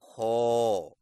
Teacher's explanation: खौ की अदायगी में ज़ुबान की जड़ को तालू की तरफ बुलंद करें, यानी खौ। मश्क कीजिए: खौ, खौ, खौ, खौ, खौ, खौ, खौ, खौ, खौ, खौ, खौ, खौ।